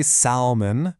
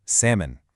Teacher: Seriously, that L might as well not even be in the word. We do not say salmon. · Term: silent L